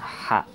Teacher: Ha itu keluarnya makhrajnya dari wastul halqi, dari pertengahan tenggorokan, ha. Tapi kalau ha ini dari dada. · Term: ha kecil